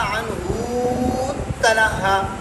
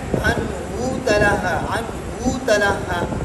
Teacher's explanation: تو بزی کے لیے اس میں کیا ہے؟ ادغام ہے، اور قنبل کے لیے اظہار ہے